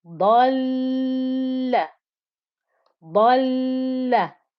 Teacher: you have to have time for both lams. Dal is me joining into the lam with the sukoon inside that shadda.